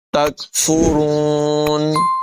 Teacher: نون میں اخفا کریں گے، غنہ کریں گے، بما کنتم تکفرون، کاف باریک ہوگی، را کو پر پڑھیں گے